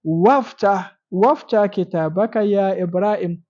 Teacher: when you have this Amzatul Wasli in the middle of a sentence, you don't pronounce them.